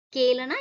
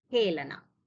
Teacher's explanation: So continuous Mahapranas of the Kha Vargas. Okay. Khelana. So it's not Kelana, it's Khelana.